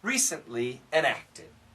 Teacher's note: the T is going to be weak